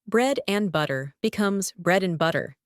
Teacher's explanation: The final D vanishes. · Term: dropping sounds